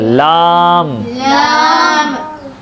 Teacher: ज़बान का दरमियान वाला हिस्सा, तालु का सख्त हिस्सा, ज़बान का दरमियान वाला हिस्सा, तालु का सख्त हिस्सा, वहाँ से काफ। आगे लाम, लाम पढ़ते वक्त ज़बान के नोक तालु पे लगेगी, आखिर में मुंह बंद हो जाएगा